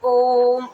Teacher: ठीक है, तो प्लुत स्वर में क्या होता है, जैसे हम उच्चारण करते हैं ओम, ओम का उच्चारण करते हैं ना, तो ओम को हम लंबा खींचते हैं, है ना, थोड़ा सा तिगुना समय लेते हैं, तिगुने से भी ज़्यादा हो जाता है कभी कभी।